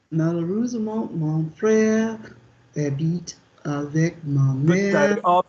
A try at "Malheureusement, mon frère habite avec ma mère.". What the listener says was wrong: Those words were pronounced beautifully, but there was a pause. Don't move on if there's a pause. Slow it down, but go in one go. Malheureusement, mon frère habite avec ma mère.